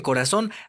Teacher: en corazón, la sílaba tónica está en la última sílaba.